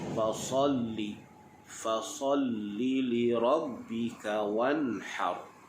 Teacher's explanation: huruf sad itu pastikan kita bunyi dia dengan tebal. Sad, sofir bersifat dengan sofir.